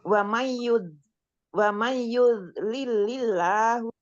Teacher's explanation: Ini ada idgham bigunah, nun sukun bertemu dengan ya. Idgham bigunah didengungkan 3 ketukan.